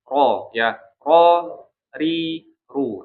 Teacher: Tapi kalau di Arab gitu ya, ro ini minim getarannya ya. Getaran lidahnya itu minim. Jadi sentuhkan tapi jangan terlalu ditekan ya.